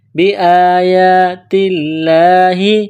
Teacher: لفظ اللہ کے نام سے پہلے زبر ہے تو لفظ اللہ کے نام کو باریک پڑھنا ہے